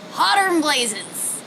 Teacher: the word than here is being reduced just to the end consonant sound